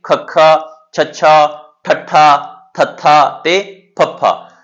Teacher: ਸਾਡੀ ਸਾਂਹ ਦੀ ਹਵਾ ਹੈਗੀ ਉਹ ਇੱਕ ਗੁੱਛੇ ਦੇ ਰੂਪ ਵਿੱਚ ਬਾਹਰ ਆਉਂਦੀ ਹੈਗੀ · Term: ਮਹਾਂਪੁਰਾਣ